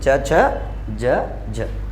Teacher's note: ऐसे व्यंजन जो स्पर्शी भी होते हैं और संघर्षी भी होते हैं उन्हें स्पर्श संघर्षी व्यंजन कहते हैं।